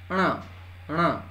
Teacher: ण में आपका जीभ जो है ऊपर मुड़ रहा है और उसके बाद नाक से निकल रहा है